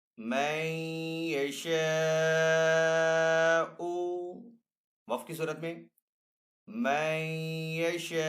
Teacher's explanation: وقف کرنے کی صورت میں حمزہ کو یہاں پہ ہم ساکن کریں گے